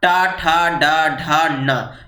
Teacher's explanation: टा वर्ग का उच्चारण स्थान होता है मूर्धा।